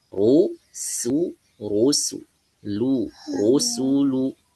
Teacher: huruf sinnya ditipiskan rnya tebal ya ro tebalkan di ro yang dibaca tebal itu dalam kondisi fathah.